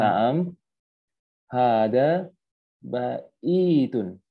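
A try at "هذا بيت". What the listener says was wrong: Baitun. Coba bilang bait. Bukan baitun.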